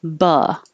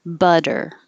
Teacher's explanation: the t changes to a d but the technical term is an alveolar flap because this the spot behind your top teeth where the d